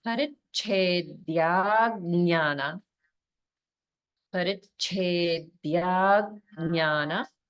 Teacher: make sure you're holding on the Nya in Jnana